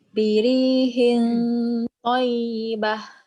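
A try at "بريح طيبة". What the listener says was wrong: Comel sangat bunyi dia. Comel tu maksudnya dia nipis. Dia nipis. Biri di dalam sikit. Birihin angkat.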